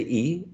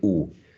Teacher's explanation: you're pushing your tongue forward when you say e and you're pushing your tongue backwards when you say oo so in this sense both of them are high but the